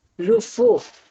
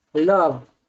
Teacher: the final vowels in these words has been lost, resulting in modern pronunciations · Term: loss of final unstressed vowels